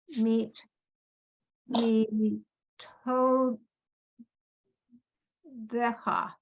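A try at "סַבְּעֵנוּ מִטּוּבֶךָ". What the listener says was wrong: Right. Very nice.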